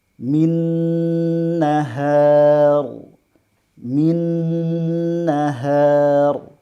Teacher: secara otomatis masuk ke hidung karena gunnah atau dengung itu adalah sifat asli yang ada pada huruf nun dan juga mim